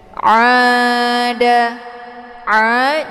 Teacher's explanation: Kalau dibaca a itu bacaan yang salah karena bukan keluarnya dari tenggorokan bagian tegak melainkan dari hidung. Aa aa dibaca panjang dua harakat karena ada alif sebelumnya harakat fathah dinamakan dengan mad thbi'i zahiri.